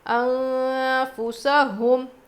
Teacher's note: یہاں پہ نون کی آواز کو ناک میں چھپا کر پڑھیں گے. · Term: اخفا